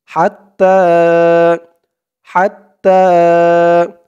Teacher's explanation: হার আওয়াজটা গলার ভিতর থেকে চিকুন হয়ে আসবে